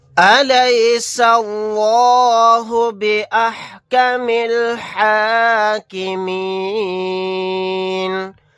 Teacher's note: یہاں پر اس لفظ اللہ کے لام کو موٹا یعنی پر پڑھیں گے، کیونکہ لفظ اللہ کے لام سے پہلے زبر ہے